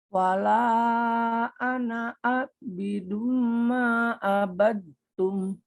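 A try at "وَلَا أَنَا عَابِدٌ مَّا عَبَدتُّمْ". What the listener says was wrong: Ibu tadi kayak terjeda di sini. Jadi usahakan kalau kita membaca Al-Quran itu mengalir aja. Jadi kadang-kadang tuh bisa ambil nafas di tengah atau kayak di jeda-jeda. Misalnya gini, wala anak abidum abatum. Nah, itu tuh kurang mengalir, Bu.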